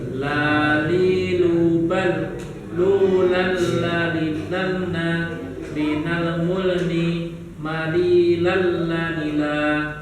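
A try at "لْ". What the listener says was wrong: Jadi untuk huruf lam, ketika dia sukun, suara kita tidak boleh putus Bapak-bapak. Jadi bukan lalna, itu bukan. Apalagi lalna, nah itu kurang pas ya. Jadi nggak boleh putus. Jadi kalau baca lalna, nah dia kesannya kol-kolah Bapak. Nah, sementara huruf lam tidak termasuk ke dalam huruf qalqalah.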